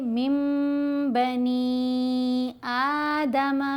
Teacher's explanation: अब देखें यहाँ नून साकिन है और आगे बा है। नून की आवाज़ को इस छोटे से मीम की आवाज़ में बदल कर पढ़ा जाएगा, यही इक़लाब है। साथ हमने गुन्ना भी करना है।